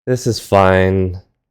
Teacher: end a sentence with a flat, low pitch throughout, like "this is fine," to kind of express hesitation or sadness.